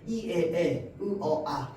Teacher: 중모음 저음으로 갈 때마다 혀의 위치가 점점점 내려감에 따라서 턱도 같이 내려갑니다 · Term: 턱이 아래로 내려가